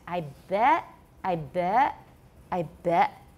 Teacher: It still has a little bit of a schwa at the end. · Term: off glide